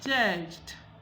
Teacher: because the judge ends with an affricate, a voiced affricate, the past tense marker becomes voiced d.